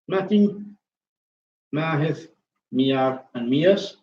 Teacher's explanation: The nasal airflow, it decreases from the M, but it remains elevated throughout the duration of the vowel. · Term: categorical phonological nasalization